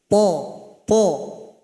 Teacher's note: Huruf th keluar sama dengan huruf ta. Ujung lidah tempelkan ke dinding gigi paling atas.